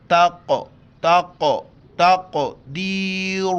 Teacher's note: قاف ساکن ہے یہاں پر قلقلہ کریں گے اور قاف کو موٹا کر کے پڑھیں گے